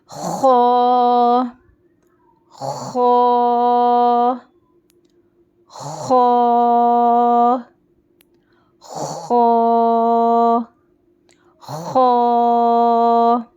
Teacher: र मुलिया है मोटी आवाज से पढ़ेंगे और ये हलक के शुरू हिस्से से अदा होता है और इसमें थोड़ी सी खरखरी आवाज आएंगी खश वाली आवाज आएंगी ख ये वाली आवाज शश वाली आवाज · نیکسٹ ون از حرف مستعلیہ ہے, موٹی آواز سے پڑھیں گے, اور یہ حلق کے شروع حصے سے ادا ہوتا ہے, اور اس میں تھوڑی سی کھرکھری آواز آئیں گی, خراش والی آواز آئیں گی, یہ والی آواز, خراش والی آواز, ٹھیک ہے, کھرکھری آواز.